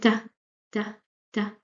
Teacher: when you pronounce ta, the tip of your tongue hits the back of the upper teeth